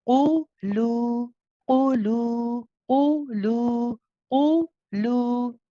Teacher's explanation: so the lam should be nice and light, and it's 2 counts. Okay, because of the mad waw, a normal regular mad tabi'i after that. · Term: light lam